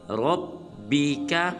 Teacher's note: را کو پر ادا کریں گے